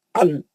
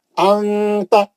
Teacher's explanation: اور باقی کے تا ہے یا اخفا کا کوئی بھی حرف ہے، نون کی آواز کو چھپا کے ناک سے پڑھنا ہے، نون کی آواز کو ظاہر ہونے نہیں دینا